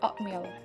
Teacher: So we just replace the T sound to P sounds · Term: assimilation of place